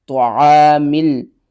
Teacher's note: الف سے پہلے زبر ہے، حروف مدہ ہے، ایک الف کے برابر کھینچ کر پڑھیں گے۔ طعام، میم لام زیر مل، طعامل۔